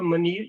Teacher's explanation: تو حالانکہ یہ میم کے اوپر دمہ ہے لیکن را ساکن اور میم کے درمیان یہ یا ساکن ہے تو یہ یا ساکن کی موجودگی ہمیں را ساکن کو ہمیشہ ہلکی آواز میں تبدیل کرنے کا کہتی ہے. تو اس لیے یہ خیر یہاں بھی را ہلکی آواز میں پڑھا جائے گا اور منیر یہاں بھی را ہلکی آواز میں پڑھا جائے گا.